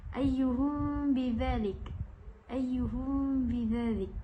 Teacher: mim sakinah bertemu dengan ba, iaitu tidak dirapatkan bibirnya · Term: ikhfa syafawi